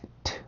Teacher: D 발음의 세트 발음이기 때문에 이 T 발음을 그 치조에다가 공기를 막아서 터뜨려 주시면 돼요. 그래서 T, 무성음 T, T, T.